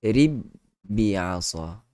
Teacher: kita mestilah memasukkan huruf ba yang pertama ke dalam ba yang kedua. Bermakna kita pangkah, buang terus huruf ba yang pertama itu, dia jadi rib bi'asa. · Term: idgham mutamathilain